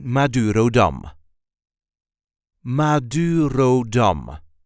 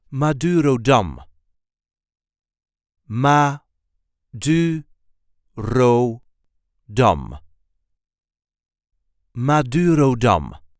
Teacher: there is a light emphasis on the last syllable